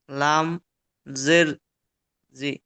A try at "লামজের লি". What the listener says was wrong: লামজের লি। লামজের জি পড়ছেন কেন?